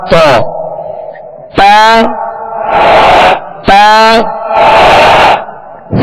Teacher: ता का जो मखर है वो जबान की नोक और ऊपर के दांतों की जड़